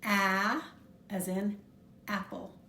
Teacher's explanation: We will first learn the short sound of the letter A, which is A, as in apple. Notice that I'm dropping my jaw pretty far when I pronounce A.